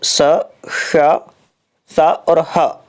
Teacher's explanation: स, श, स और ह, ये ऊष्म व्यंजन हैं। और ऊष्म व्यंजनों का जो उच्चारण है वो केवल घर्षण से होता है